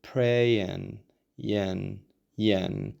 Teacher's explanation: we change that I into a schwa sound like America about again. OK, and we drop that G